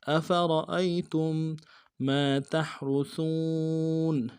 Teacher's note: تا کو میم ساکن کے ساتھ ملائیں گے، میم ساکن کے اوپر تشدید زور دیں گے